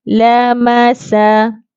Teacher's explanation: sa ni ada sofir, desiran.